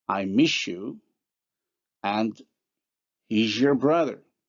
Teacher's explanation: for s and z, how they become respectively the palatal alveolar fricative sh and zh in the examples I miss you and he's your brother.